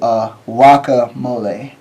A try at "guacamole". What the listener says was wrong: You're not saying guacamole. You're saying waka?